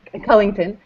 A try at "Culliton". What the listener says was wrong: There's just no G, so it's Culliton.